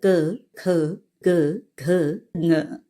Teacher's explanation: क वर्ग उच्चारण स्थान कंठ